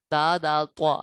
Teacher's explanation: زبان کی نوک اور اوپر کے دانتوں کی جڑ سے ادا ہوتے ہیں۔ اب ادھر دیکھیں زبان کی نوک، اوپر کے دانتوں کی جڑ، یہ آ گیا دانتوں کا کنارہ، زبان اوپر کے دانتوں کی جڑ، یہ آ گئی جڑ، ٹھیک ہے۔